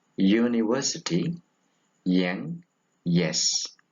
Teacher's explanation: It is a voiced palatal glide.